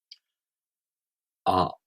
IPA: a